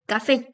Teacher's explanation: El acento se presenta en la última sílaba que es en FE, tildando obviamente la vocal. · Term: palabras agudas